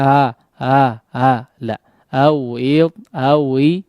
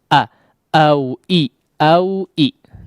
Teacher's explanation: Nah, itu seperti huruf mad yang diucapkan ya, bukan hamzah. Hamzah itu merapatkan antara kedua pita suara a. Sehingga jelas, tegas ya awalan huruf hamzah ketika terucap di awal. · Secara khusus dari sifat jaharnya ya, dari sifat jaharnya awalan pengucapan hamzah ya, awal terucap huruf hamzah itu harus betul-betul terdengar jelas ya